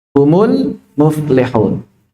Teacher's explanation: Dan yang ketiga adalah mim jamak, di mana dia ketika diwasalkan selalu menjadi dhammah